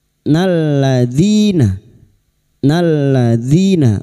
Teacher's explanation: dzi kasr bertemu ya sukun dua harakat kita panjangkan wat thbi'i.